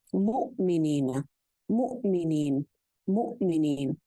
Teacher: کے اوپر آواز اور سانس دونوں بیک وقت رک جاتے ہیں. جب آواز اور سانس دونوں بیک وقت رک جاتے ہیں تو پھر ایک جھٹکے کی سی فیلنگ آتی ہے